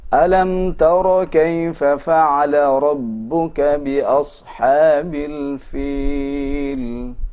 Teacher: Maka huruf ra harus kita tafkhimkan ketika pertama dalam keadaan berharokat fathah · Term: suara ra yang mufakham